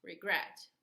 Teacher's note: We have a two-syllable word, and the stress is gret. Regret. We don't say regret.